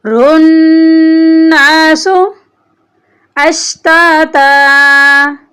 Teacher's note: یہاں پر آپ کو نون مشدد نظر آ رہی ہے، نون پر ہم غنہ کریں گے۔